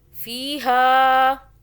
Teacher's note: فی، ہا کو زیادہ کھینچا، اوپر چھوٹی مدہ